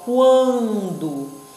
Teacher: Olha aqui, também é QU. Mas por que esse QU não é dígrafo? Porque eu escuto o som do U